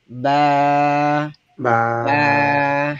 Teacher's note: এই বা উচ্চারণ হবে ঠোটের ভেতরের ভেজা অংশ থেকে